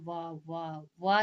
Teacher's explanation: दांत और ओठ दोनों से उच्चारित होता है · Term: दंतोष्ठ